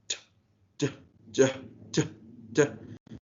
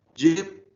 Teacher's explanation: Manner articulation is affricate, place of articulation is tongue and roof of mouth, and voicing is voice. As I said, that your vocal cords vibrate. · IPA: /dʒ/